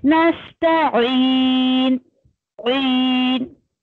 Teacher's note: नून साकिन है, नून की आवाज आपकी हल्की सी नाक नोजल पार्ट उसमें आएगा हल्का सा